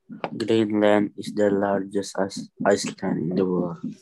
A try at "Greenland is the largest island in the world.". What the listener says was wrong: It's not Iceland, it's island. Pulau, the S is silent. Iceland is a country, I-C-E. So Bali Island, I-S-L-A-N-D, the S is silent.